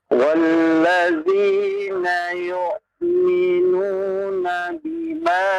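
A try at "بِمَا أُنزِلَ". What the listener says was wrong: Hamzah, bukan ain ya. Hamzah, pakai hamzah, bukan pakai ain. Bima unzila.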